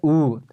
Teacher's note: अगर आप होठ को सीधा रखिएगा तो ऊ नहीं निकलेगा, आप ऊ होठ के लिए होठ को ऊ के लिए होठ को गोल करना पड़ेगा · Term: ओष्ठ